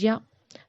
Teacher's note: یا زبان کے بیچ کے حصے سے ادا ہوتا ہے